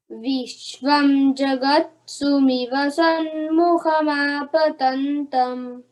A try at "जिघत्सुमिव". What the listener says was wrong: हाँ, जिघत जगत नहीं, जिघत्सुमिव हाँ, और सन्मुख नहीं, सम्मुख।